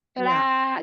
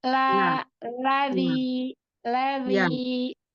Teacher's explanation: Cuman tadi huruf lamnya itu kayak le seperti itu. Jadi, lamnya itu harakatnya la tidak le seperti itu. La gitu. Lazi ladzi.